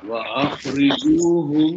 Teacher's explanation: mim sukun ketemu dengan mim, maka dia ditahan, dia berdengung. 2 harokat.